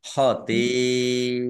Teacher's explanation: karena bertemu dengan huruf hamzah dalam satu kata maka menjadi mat wajib muttasil dibaca panjang harus 5 harokat